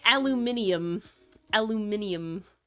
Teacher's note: the Brits say it aluminium aluminium they add a whole syllable in there